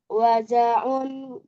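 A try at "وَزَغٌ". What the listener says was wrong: Wazahun. Ghoin itu ghoin.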